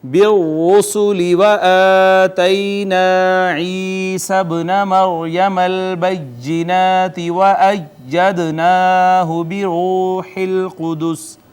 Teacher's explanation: را کو پر کر کے ہم نے پڑھا، مفخم ہوگی اس وجہ سے کہ مدموم ہے